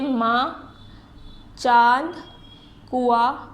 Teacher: इसका उच्चारण करते समय ध्वनि मुंह के साथ साथ नाक से भी बाहर आती है। इसका जब हम बोलते हैं तो उसकी ध्वनि यानी मुंह से भी आती है और नाक से भी आती है। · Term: अनुनासिक